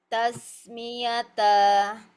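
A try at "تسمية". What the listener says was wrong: Ya, sinnya panjang aliran suaranya.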